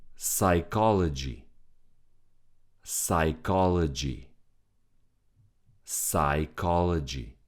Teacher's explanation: The P from the beginning is silent. We don't read it.